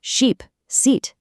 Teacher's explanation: But for the long vowel, the I in sheep, the sound is stretched out and your mouth muscles get tense, almost like you're pulling your lips into a smile.